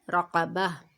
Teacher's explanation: اب یہاں پہ دیکھیں گول تا جو ہے وہ ہا میں بدل گئی. ٹھیک ہے، گول تا جو ہے وہ وقف کی صورت میں ہا میں بدل جاتی ہے